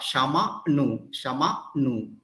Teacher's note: Actually, here there is a pause. So ayin is not pronounced, but there is a guttural stop.